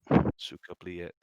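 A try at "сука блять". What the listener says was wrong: That's not how you fucking say it. It's suka blet. You never pronounce the Y. It's suka blet.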